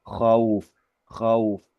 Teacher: Dua vokal yang dibaca berurutan dan dua-duanya dibaca dengan sempurna ya. Itu bacaan diftong atau bacaan layin situ.